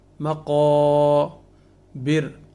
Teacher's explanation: را باریک ہوگی اس لیے کہ اس سے پہلے حرف کے نیچے زیر ہے، اور را ساکن ہو رہی ہے وقف کی صورت میں یہاں تو را باریک ہوگی۔